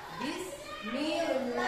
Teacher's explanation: Yang pertama, lam tarkik atau lam tipis. Nah ya, membacanya huruf lamnya dibaca tipis